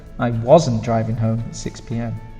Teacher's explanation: it's a stronger sound on the was than it is in the positive